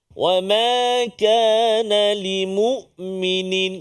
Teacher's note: Hamzah kenal pasti Dekat mana tempat keluar dia di Pangkal pangkal kerongkong kita ni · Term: huruf hamzah